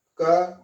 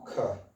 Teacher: के में मेरे श्वास कम निकली है, खे में ज्यादा निकली है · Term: अल्पप्राण